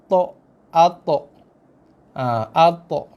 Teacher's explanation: Hujung lidah sentuh belakang gigi kita yang atas. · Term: qalqalah